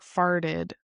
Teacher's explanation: when you're saying it in the past, it's like farted in US English because we kind of use the flap t there